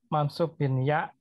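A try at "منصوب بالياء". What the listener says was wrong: bil pakai bil ya, bukan bin. Bil pakai alif lam itu. Bil ya,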